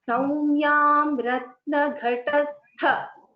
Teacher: That tha mahaprana should be heard. It is the mahaprana akshara. So we have to put little more stress when we say tha there.